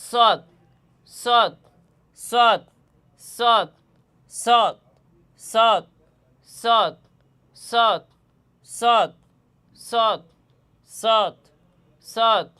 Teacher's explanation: জিহ্বার আগা সামনের নিচের দুই দাতের আগা ও সামান্য মধ্যখানে লাগাইয়া সৎ হরফটি উচ্চারিত হয়